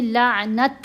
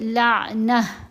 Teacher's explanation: جب وقف آ جائے تو یہ ہا ساکن میں بدلی جاتی ہے۔ یہاں ہم نے لعنت نہیں پڑھا، تا کی آواز نہیں پڑھی جائے گی، ٹوٹلی تا جو ہے وہ خاموش ہو جائے گی، ہا ساکن میں بدلی جائے گی آواز، تو پڑھیں گے لعنہ۔